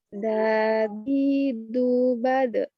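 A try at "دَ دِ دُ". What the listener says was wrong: Oke, bagus.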